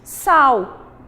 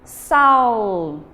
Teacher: ocorreu na região onde vivemos uma mudança de pronúncia do L e por isso pronunciamos como U essa partezinha da palavra